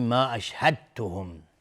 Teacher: دال و تا هر دو مخرجشون یکیست. میگیم ما اشهدتهم، یعنی دال در تا ادغام میشه. میم ساکن بعدش خا اظهار شفوی.